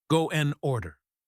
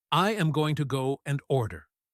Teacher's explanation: the word and is almost never fully pronounced. We usually just say the N sound.